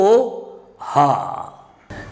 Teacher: this sound ha is produced from glottis. Therefore, it's called glottal sound. Ka, ga, nga, velar sounds, and ha is the glottal sound.